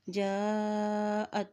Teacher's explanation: हमज़ा के ऊपर मद है तो इसको लंबा अदा करेंगे